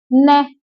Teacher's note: नै किससे बोला जा रहा है, जीभ दांतों के लग रही है। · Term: दंत्य